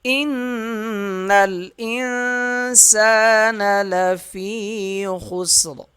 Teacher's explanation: جب وقف کریں گے تو را کو پر پڑھیں گے یعنی موٹا پڑھیں گے